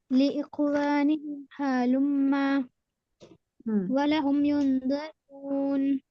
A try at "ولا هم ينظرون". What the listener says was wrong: لہم نہیں، ولا ہم ہے.